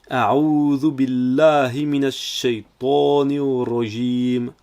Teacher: On ne peut pas prononcer billahi avec un arrêt entre les deux, car le bi est collé avec le mot Allah. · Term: liaison